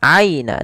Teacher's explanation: Hati-hati di dalam lafal ya sukun ini sering terjadi menggantinya dengan huruf e. Harusnya dibaca dengan aina dengan i bukan e.